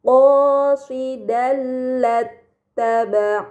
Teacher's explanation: Ini dinamakan idgham bila gunnah. Maka fathahtain dibaca secara melebur tanpa gunnah yang dipanjangkan.